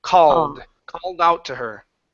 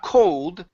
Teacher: a little bit wider so called out oo oo oo oo it's an ah sound instead of O